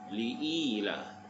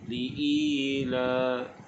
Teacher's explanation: I di sini dibaca dengan mad asli, panjangkan dengan kadar 2 harakat. Li'ila.